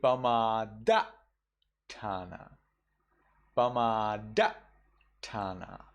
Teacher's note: in the double consonants, you do not pause. Instead, you cut off.